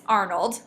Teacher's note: So the stress is on AR